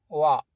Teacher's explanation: ഫ ഉച്ചരിക്കുന്നത് പോലെയാണ് മുൻപല്ല് ചുണ്ടിൽ അമർത്തി വ ഉച്ചരിക്കുന്നത് അതിന്റെ ഉച്ചാരണം അങ്ങനെയല്ല ചുണ്ട് വട്ടത്തിലാക്കി വെക്കുമ്പോൾ വാ എന്ന മഹ്റജ് അവിടെയാണ് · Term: വായിന്റെ മഹ്റജ്